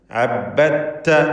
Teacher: ഇതിൽ ദാലിന് ശേഷമുള്ള തായിൽ പൂർണ്ണമായും ലയിപ്പിച്ച് ഷദ്ദുള്ള താ മാത്രമാണ് ഉച്ചരിക്കുക. ഇദ്ഗാമുൽ മുതജാനിസൈനി സഗീർ എന്നാണ് അതിൻ്റെ പൂർണ്ണനാമം. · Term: ഇദ്ഗാം കാമിൽ